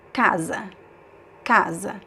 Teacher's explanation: First stressed, second syllable unstressed. It's weaker.